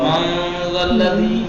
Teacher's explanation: یہاں پہ اخفا ہوگا. یہاں پر نون کا مخرج ظاہر نہیں ہوگا. ما والذی ناک کی فضا سے کھینچ کے ادا ہوگا.